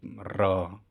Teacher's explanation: र उच्चारण में जीवा दो-तीन बार जो है वो कांपती है या प्रकंपित भी इसको हम कहते हैं। · इसके उच्चारण में जीभ की नोक जो है वो हवा से वाइब्रेट होती है। ठीक है? लुढ़कती है और ऐसा प्रतीत होता है कि लुड़क रही है र। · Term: लुंठित ध्वनि